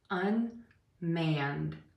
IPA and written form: ənˈmænd (unmanned)